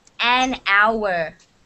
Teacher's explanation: you don't say hauer the h is silent